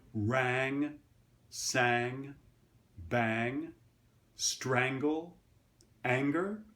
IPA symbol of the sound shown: æ